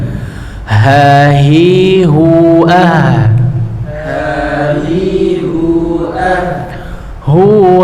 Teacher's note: akan ada suatu udara ya yang mengalir dari huruf H tersebut Khususnya ketika dia sukun ataupun ketika ia bertasdid